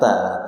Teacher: Ta ada anginnya, ada hams.